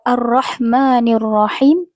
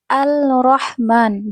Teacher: Seperti membaca lafaz ar-rahmanir rahim, ar-rahman malah dibaca menjadi al-rahman dengan melepaskan idgham